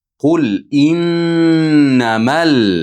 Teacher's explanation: mal lamga bog'lab o'qiymiz